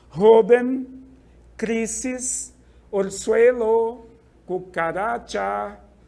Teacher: é a penúltima sílaba sempre a tônica mas nenhuma dessas é acentuada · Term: palabras graves